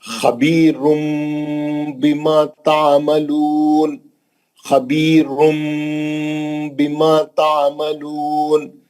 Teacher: بِذَنبِهِمْ، نون ساکن کا اخلاب حرف با، میم لکھا ہوا ہے چھوٹا، وہ نون کی آواز کو میم سے بدل کے غنے سے پڑھیں گے